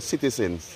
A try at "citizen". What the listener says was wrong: Take off the S.